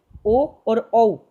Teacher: ये दो स्वर हैं तथा जब बोले जाते हैं तो कंठ और ओष्ठ दोनों की मदद ली जाती है। तो ओ और ओ को कंठोष्ठ्य वर्ण कहा गया है।